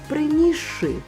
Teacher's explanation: Ш поглинув си і став подовженим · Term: поглинання